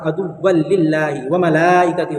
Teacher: हुरूफ मद्दा के बाद हमज़ा इसी कलीमे में, इसलिए मद्दे मुत्तसिल हुआ, यहाँ पर आपको 4 अलिफ के बराबर खींचना है